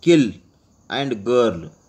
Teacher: the back of the tongue may be brought in contact with the soft palate to produce the consonants at the beginning of the English words kill and girl.